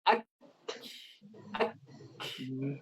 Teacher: Makhrajnya tertutup. Karena kaf itu mengandung nafas, maka ketika dibuka, keluarlah ak. Nafas yang keluar. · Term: hams